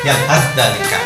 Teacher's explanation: Jadi suaranya sa dimasukkan ke dal. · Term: idgham mutaqaribain